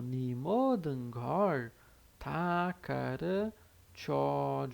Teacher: Aqui a gente escreve como NE, né? Seria né, mas normalmente a gente fala como ni